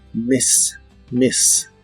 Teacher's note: La I de esta palabra es corta y suena un poco como E.